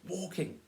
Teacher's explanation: It's participles, it's always a stress on the first syllable